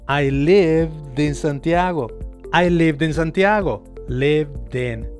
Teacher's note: ¿Viste cómo se combinó ese sonido d del final con la vocal que venía después?